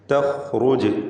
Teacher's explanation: ജീമിന് ഖൽഖല സുഗ്റ നൽകി ശബ്ദം ഹറക്കത്ത് പോലെ ചലിപ്പിക്കണം സുക്കൂനിനെ